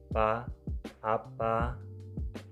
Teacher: Pada fonem P, cara artikulasinya plosif dan letak artikulasinya bilabial. Bunyinya pa, apa.